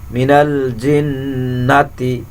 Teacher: الذي يوسوس في صدور الناس من الجنة, জিন, এখানে জিমটা শক্ত করে উচ্চারণ করতে হবে, জিন নুনকে ধরে রাখতে হবে, নুনের উপরে তাসদিদ আছে সেজন্য নুনকে গুন্না করতে হবে, অজীব গুন্না।